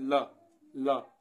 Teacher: जैसे हम ला कहते हैं तो इसमें हमारी जीभ थोड़ी सी टेढ़ी सी हो जाती है और हवा साइड से निकल जाती है। · इसमें जो हमारे मुख से जो वायु निकलती है वो साइड से निकल जाती है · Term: पार्श्विक व्यंजन